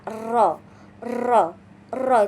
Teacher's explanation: bergetarnya seluruh ujung lidah saat kita mengucapkan huruf tersebut. Contohnya ro itu bergetar. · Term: attakrir